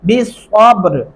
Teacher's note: سین نہیں ڈالنا اور با پہ کلکلا کرنا ہے